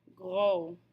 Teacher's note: Note that we're not pronouncing the final S.